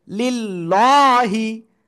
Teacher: আল্লাহ শব্দের লামের ডাইনে জের চিকুন করে পড়তে হবে